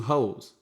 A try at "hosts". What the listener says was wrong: Enunciate, son. Because I could have swore you said hoes.